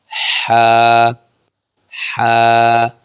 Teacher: عین اور ح کا مخرج وسط حلق یعنی جو درمیانہ حلق ہے، یہاں سے یہ عین بھی نکلے گا اور ح بھی نکلے گا. ح بالکل نرمی کے ساتھ جب ہم پڑھیں گے، ح جیسے کوئی ہم ٹھنڈی چیز کھاتے ہیں تو گلے سے آواز آتی ہے، یہ والی ساؤنڈ نکالنی ہے، ح ح.